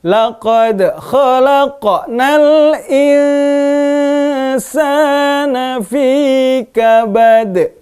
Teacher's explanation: Laqad kolkolahnya ke arah huruf e ya. Tapi huruf kha memantulnya kolkolahnya ke arah huruf o ya.